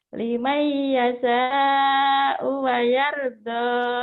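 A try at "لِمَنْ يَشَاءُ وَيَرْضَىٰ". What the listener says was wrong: Tuh, shinnya kurang. Limai yasha. Limai yasha. Sya. Limai yasha wa yarda. Ibu latihan nanti shinnya ya. Masih kurang.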